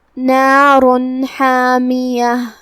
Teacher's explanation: نار حامیہ کلمت نارن کے آخری میں را پہ تنوین پیش ہے، را کو ہم تفخیم سے ادا کریں گے، جو کہ اس کے بعد حرف الحا ہے اور حا حروف الاظہار میں سے ہے، تو ہم یہ تنوین کو ظاہر کریں گے